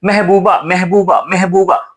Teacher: वो म के जगह पर में का उच्चारण हो जाता है या उच्चारण ऐसा है ये जो हमारी जुहवा है ना ये इसमें अतिरिक्त प्रयास करना पड़ता है इसीलिए तो जल्दी में पढ़ने पे वो अ का उच्चारण ए हो जाता है।